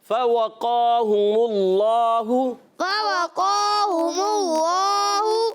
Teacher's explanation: دونوں ہونٹ گول کر کے آپ ادا کریں گے تو واو کی ادائیگی ہوگی. قاف موٹے حروف میں سے، حروف مستعلیہ میں سے، موٹا کریں گے حروف مستعلیہ میں سے قاف ہے، اور قاف پر کھڑا زبر ہے، کلی کھینچیں گے بھی.